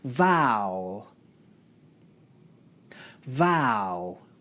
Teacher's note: Notice how smoothly the aʊ diphthong transitions into the 'l' consonant sound.